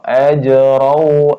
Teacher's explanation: Terus ini qalqalah sughra, ajrau ya, ajrau masih mantul, tapi mantul yang ringan ya, lewat saja